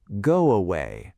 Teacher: a new connecting sound appears. >> Go away becomes go away. The W sound slides in between.